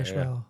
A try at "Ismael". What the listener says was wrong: Yeah, which is weird. It doesn't have an H in it, but for some reason there's an H when people pronounce it.